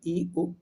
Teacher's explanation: जिन स्वरों के उच्चारण में मुख द्वार सबसे कम खुलता है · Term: समृद्ध